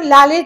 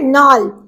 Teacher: ল টা ন তে রূপান্তরিত হয়